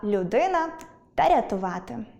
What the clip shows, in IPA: л'уди́на